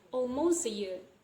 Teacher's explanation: So the T sound in this clause is not pronounced.